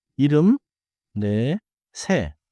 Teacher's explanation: Same front family, three mouth heights. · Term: front unrounded row